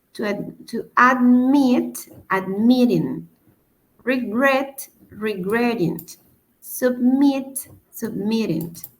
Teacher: la acentuación está en la segunda sílaba y no en la primera